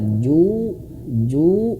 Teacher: ada huruf wau ee dia panjang dua harakat